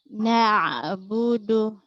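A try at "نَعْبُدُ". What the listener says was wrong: Ya, jangan bilang bede, budu. Dhamma monyong. Na'budu.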